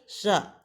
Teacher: इसके उच्चारण का स्थान है तालू इसी को तालव्य भी कहा जाता है